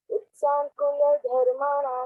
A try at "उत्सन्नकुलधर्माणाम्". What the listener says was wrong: उत्सन नहीं उत्सन बेटा, उत्सन्न कुल धर्माणाम। आधा ना पूरा ना दो है बेटा। उत्सन्न कुल धर्माणाम। उत्सान नहीं बेटा।